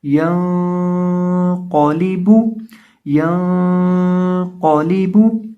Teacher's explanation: قاف کو پر کریں گے، قاف کو موٹا کریں گے، کیونکہ قاف موٹے حروف میں سے ہے، حروف مستعلیہ میں سے ہے، یعنی حروف مستعلیہ موٹے حروف کو کہا جاتا ہے، اور قاف حروف مستعلیہ میں سے ایک حرف ہے، اس لیے اسے ہم یہاں موٹا کر کے پڑھیں گے۔